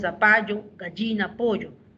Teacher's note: Pero en la pronunciación, en España, en algunos territorios de España, esa doble L se pronuncia. En el castellano que llegó al Perú, esa doble L no se pronuncia, se pronuncia como Y.